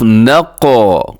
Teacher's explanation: قاف قلقلہ بھی ہے اور اس میں قلقلہ بھی اعلیٰ درجے کا ہوتا ہے. نقو, قاف کا قلقلہ واجب ہوتا ہے, ضروری ہوتا ہے.